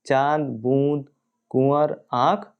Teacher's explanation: दूसरा है अनुनासिक, यानी जो चंद्रबिंदु को अनुनासिक कहते हैं। अनुनासिक के उच्चारण में वायु नाक और मुख दोनों से निकलती है, जैसे चांद, बूंद, कुंवर, आँख आदि।